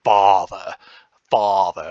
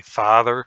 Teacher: there's a lot of variability in how far front or back the ah is